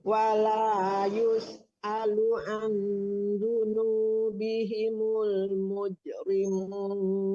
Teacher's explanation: Nah, kalau an-nya itu dengung ya Bu ya. Jangan menekan nun tapi disamarkan ke zal. Karena itu hukum ikhfa hakiki ya.